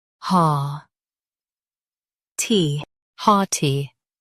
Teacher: Stress ha and keep T light.